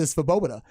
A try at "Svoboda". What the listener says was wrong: I don't think the V is pronounced. I think you just say Swoboda.